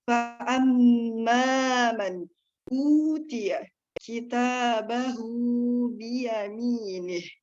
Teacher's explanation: Di situ ada hukum tajwid, izhar, nun mati bertemu dengan alif atau hamzah, maka dibaca jelas